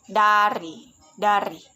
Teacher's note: ciri-ciri hidup, oral, apikodental, plosif